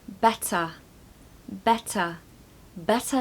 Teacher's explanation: Don't pronounce the R on the end of better. Now, I think I've talked to you about this before, but ER on the end of a word is actually a schwa sound.